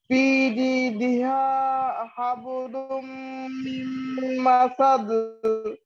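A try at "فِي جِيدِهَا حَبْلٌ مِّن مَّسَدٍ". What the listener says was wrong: আচ্ছা, মাশাআল্লাহ।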